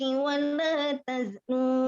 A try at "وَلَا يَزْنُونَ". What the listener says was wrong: Yaznun. Titiknya di bawah.